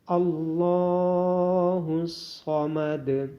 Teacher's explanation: لام اور صاد کو موٹا پڑھا جائے گا، لام کے اوپر کھڑی زبر ہونے کی وجہ سے لام کو لمبا کیا جائے گا اور دال پہ قلقلہ ہوگا۔